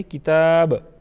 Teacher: با پر ہم قلقلہ کریں گے، آواز میں جنبش پیدا کریں گے. کتابہ اگر وقف کی صورت میں پڑھتے ہیں تو پھر اس کی لاسٹ والی جو حرکت ہے اس کو ہم ساکن بنائیں گے، کتاب.